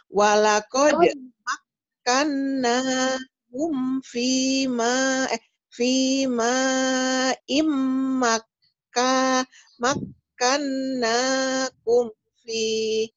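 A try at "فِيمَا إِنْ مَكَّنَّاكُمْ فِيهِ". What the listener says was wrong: Iya, maknya kurang panjang ya, karena itu majais, jadi panjang. Fima, ini Fima, iya. Iya.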